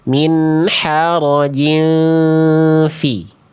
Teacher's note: Udah disamarkan nunnya, ya, udah ditahan 2 harokat, samar dengungnya pas, nggak sampai betul-betul kayak eng. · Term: ikhfa hakiki